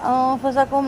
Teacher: نون ساکن کے بعد فا ہے، باریک اخفا کریں گے